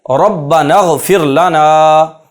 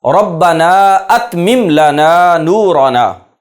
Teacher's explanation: یہاں ربنا کے بعد اتمم لنا میں حمزہ ہے، یہ حمزہ نہیں گرے گا، یہ حمزہ قطعیہ ہے